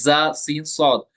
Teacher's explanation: इनमें एक सिफत पाई जाती है, सिफत सफीर। तो इनमें इनको सिटी के साथ पढ़ना है